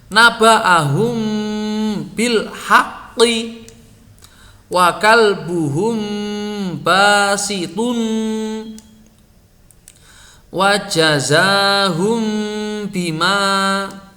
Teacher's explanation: Mim tidak bertanda bertemu ba dibaca dengung yang lama. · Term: ikhfa syafawi